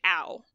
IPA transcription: au